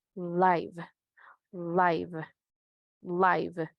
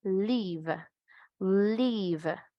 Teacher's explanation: Tiene que estar entonces sonido corto como muy parecido a una E, pero sigue siendo una I en español.